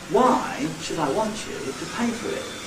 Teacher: I could, in certain circumstances, make the tonality even more complicated and can say, why should I want you to pay for it? Well, I've got three complete intonation patterns, each with its own nucleus